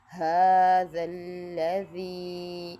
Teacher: ھذا الذی، اس میں ذال دونوں دانتوں کے درمیان زبان کی نوک لگے گی اور ذی کو ہم لمبا کریں گے کیونکہ یا مدہ ہے۔